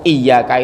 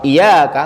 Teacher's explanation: huruf ya ini harus ditasdid harus ditahan kalau tidak ditahan artinya apa bukan kepadamu iyaka itu artinya kepadamu